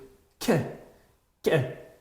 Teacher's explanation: Bu harfni biz k deb aytadigan bo'lsak, bu harfni esa biz k qilib qattiqroq, jarangdor qilib talaffuz qilamiz